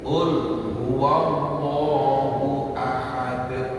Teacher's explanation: Ul huwallahu ahadun. Karena ayat berhenti dimatikan menjadi ahad. Nah, kalau dia berharakat kemudian diwakafkan menjadi mati namanya kolkolah kubro, kolkolah besar.